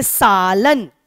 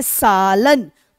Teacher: लन की अपेक्षा सा पे ज्यादा बल दे रहे हैं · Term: बलाघात